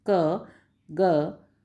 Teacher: क और ग को बोलने पर जीभ का जो पिछला भाग है यानी बैक है वो सॉफ्ट पैलेट को टच करता है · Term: वेलर